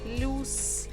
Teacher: in English we say plus, in Russian almost the same, just the vowel is different. The vowel is U.